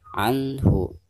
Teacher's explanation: cara membaca nun sukun di sini itu harus dizohirkan ya, atau dijelaskan suara nun sukunnya